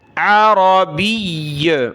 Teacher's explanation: وقف ہو رہا ہے لیکن تشدید ہے تو سختی کے ساتھ رکیں گے